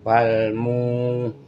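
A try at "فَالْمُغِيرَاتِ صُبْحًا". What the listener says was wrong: Di ayat kedua, ayat ketiga munya justru malah pendek harusnya. Fal mugi bukan fal mu, berarti ketuker ya. Jadi yang kedua munya, ayat kedua munya panjang, yang ayat ketiga munya yang pendek.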